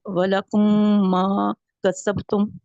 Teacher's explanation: میم کو ہم ادغام کر دیں گے، میم کے ساتھ ملا دیں گے اور میم کو جی غنہ کریں گے